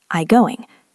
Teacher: usually we drop the t in it and we just say I going.